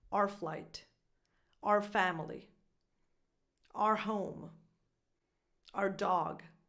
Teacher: So this word, our, becomes just an R sound, just like the R in the alphabet.